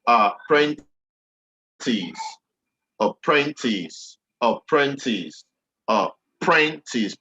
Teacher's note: Print is where it is, the second syllable.